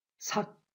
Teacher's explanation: 공기가 막힌 채 소리가 그치게 됩니다.